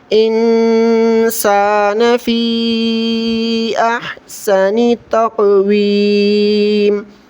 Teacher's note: نون ساکن پر غنہ کیا جاتا ہے، یہاں پر غنہ کریں گے